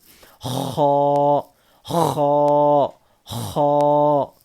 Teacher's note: حلق کا اوپر کا سوکھے حصے سے، حلق کے سوکھے حصے سے، اوپر والے سوکھے حصے سے خا ادا ہوتا ہے. حلق کے اوپر والے سوکھے حصے سے خا ادا ہوتا ہے. خا خا، اس کو موٹا پڑھنا ہے.